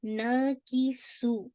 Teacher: نا اور سو یہ دونوں آپ کا ایک الف مت دیا ہے اور ایک واو مت دیا. دونوں کو آپ نے 2 کاؤنٹ پڑھنا